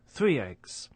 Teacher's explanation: with a linking y sound, for example, in the phrase 3 eggs